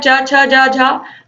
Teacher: इनका उच्चारण कंठ से होता है। चा वर्ग तालु से हो गया